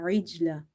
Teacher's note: Ain is from the middle of the throat. Try to pronounce it in from the very middle of your throat.